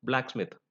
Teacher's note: made up of two words and they written as one word the stress is on the first element